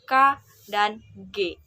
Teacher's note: konsonan yang terjadi pada pangkal lidah dan langit-langit lunak, seperti pada bunyi K dan G.